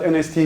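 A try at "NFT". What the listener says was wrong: Well, it's supposed to be an F.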